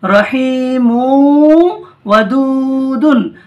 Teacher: তারপর দেখুন র জাবার র, হায়াজের হি, এটা ইয়ামাদা টান হবে একালিফ, মিম ওয়াও দুপেশ মৌ, একালিফ গুণনা হবে কারণ তানবিনের পরে কি এসছে ওয়াও, তানবিন নুন সাকিনের পরে ওয়াও এলে ঈদগামে নাকিস হয়, একালিফ গুণনা করে পড়তে হয়। রহিমু, রহিমু, ওয়াও জাবার ওয়া, দাল ওয়াও পেশ দু, ওয়াও মাদ্দা টান হবে একালিফ, দাল দু পেশ দুন, ওয়াদুদুন, ওয়াদুদুন, রহিমু ওয়াদুদুন।